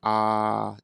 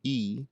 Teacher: Then when you introduce the tongue, you go from a low tongue to a higher tongue. So that's the difference between ah and e. But if I stop vocalizing and I just blow wind in those two tongue positions, it sounds like this.